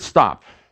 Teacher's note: a t stop a vowel ah and a p stop in an instant you say stop and you've done four things